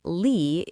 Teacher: And the final syllable lee, is where people get tripped up by the spelling. That final e is not silent. It makes a long e sound.